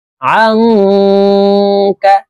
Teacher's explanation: নুন সাকিনের পরে ইকফার হরফ কাফ আসছে, এই কারণে এই নুন সাকিনকে নাকের ভিতরে লুকাইয়া গুন্নার সহিত পড়তে হবে।